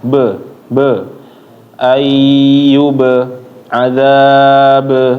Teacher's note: Qalqalahnya di huruf ba itu dijelasin ya. Jangan sampai dia kurang kedengaran ataupun gak jelas.